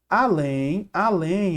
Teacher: a sílaba tônica é a última então é uma oxítona